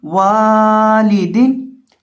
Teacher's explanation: واو کو پڑھتے وقت اس کو لمبا کریں گے کیونکہ اس کے ساتھ الف ہے، ایک الف کے برابر لمبا کر کے پڑھیں گے، اور اسی طرح واو کو پڑھتے وقت ہونٹوں کو گول کر کے پڑھیں گے۔